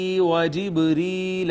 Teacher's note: با ساکن اس پہ کلکلا ہوگا، یا کا ما قبل مکسور، لہٰذا اس کو ہم مدہ کریں گے، یا کو یہاں بھی یا مدہ ہے، یہ الف مدہ ہے.